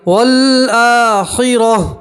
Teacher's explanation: آخر میں صرف ہا کی آواز آئیں گی.